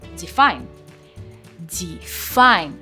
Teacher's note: it has the stress on the second syllable of the verb